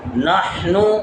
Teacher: حا خا والی حا جو حلق سے ادا ہوگی